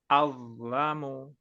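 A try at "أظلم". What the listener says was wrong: Masih kurang tebal ya. Awlamu. Awlamu.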